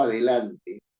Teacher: Si yo digo adelante, ¿no es cierto?, tengo cuatro sílabas, a, de, lan, de. Y la mayor fuerza de voz está en la penúltima, lan. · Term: palabras graves